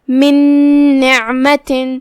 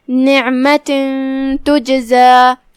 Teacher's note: عین کی ادائیگی حلق کے درمیان والی حصے سے ہے اور جو کہ اس پہ جزم ہے تو اس کا دھیان رہے.